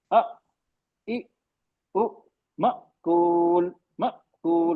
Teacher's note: जब हमजा पर सुकून होता है तो आवाज बनाने वाली रगें वोकल कॉर्ड को पूरी तरह बंद कर देते हैं